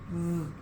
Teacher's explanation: your bottom lip goes under your two front teeth. You bite down just really lightly. Your tongue goes towards the bottom of your mouth.